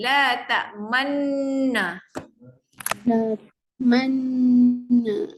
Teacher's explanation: Kena panjang dengung ada. La ta'man. Masa dengung tu muncungkan bibir.